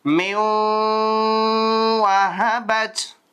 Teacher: வாவ கொஞ்சம் புரட்டி நல்லா இழுத்து கொஞ்ச நேரம் ஒன்னா பண்ணி ஓதணும்